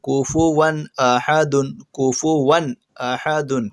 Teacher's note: کفواً احد، کفواً، کفواً غلط ہے، کفواً احد، کفواً احد، واو کے اوپر 2 زبر کی تنوین ہے، اس کے بعد حروف حلقی میں سے حمزہ آیا، اس لیے تنوین کی آواز کو بغیر غنہ کے جلدی پڑھیں گے